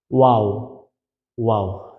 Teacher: দেখুন সামান্য কিন্তু ফাঁক থাকতেছে, একেবারে আমরা মিলাই দিতেছি না, আবার ঠোঁট গোল না করিও বলতেছি না, গোল করতে হবে, সামান্য ফাঁকও রাখতে হবে।